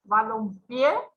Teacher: cargamos la voz en la última sílaba, termina en vocal, entonces una palabra aguda y va a llevar tilde, ¿sí?